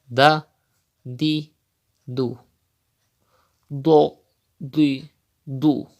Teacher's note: Dod is also from mustalia letters, so you have to read with thicker voice as I read.